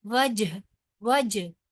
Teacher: जीम जो है वो हरूफे कलकला में से है, लिहाजा वाव जब जीम को हम लोग पढ़ेंगे तो इसको थोड़ा सा हिलाकर पढ़ेंगे